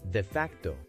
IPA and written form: deɪ ˈfæktoʊ (De facto)